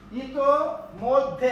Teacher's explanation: ইতোমধ্যে একটা অল্প প্রাণ একটা মহাপ্রাণ, দ হচ্ছে অল্প প্রাণ, ধ হচ্ছে মহাপ্রাণ। তাহলে ইতোমধ্যে, এখানে কিন্তু ওই বর্ণটা ডাবল হলো না, রস্যই গেল।